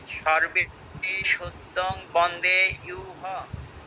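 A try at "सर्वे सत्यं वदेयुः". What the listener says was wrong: আবার হ বলছেন কেন রসুকার আছে তো হু উচ্চারণ হবে রসুকারে দিলে হু হবে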